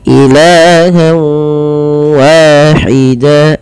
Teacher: Apa yang dimasukkan adalah bunyi suara nun kepada bunyi waw. Awalnya ilahan wahida karena kita masukkan menjadi ilahawa. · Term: idgham bi gunnah